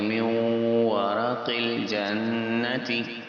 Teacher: next اس میں بھی واو، نون ساکن کے بعد واو آ رہا ہے تو ادغام کا رول ہوگا، غنہ کریں گے